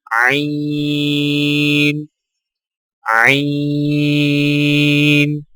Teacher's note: عین کی ادائیگی میں زبان کی جڑ کو حلق کی طرف مضبوطی سے دباتے ہوئے باریک اور رگڑ کھاتی آواز میں پڑھیں، یعنی عین عین۔